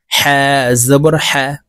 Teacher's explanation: হা জবর হা হরফ হলকের মধ্যখান থেকে উচ্চারণ করতে হবে